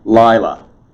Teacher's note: Notice the accent above the first lamed. It is accent on the first syllable.